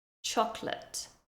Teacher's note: we almost lose that middle syllable. Chocolate.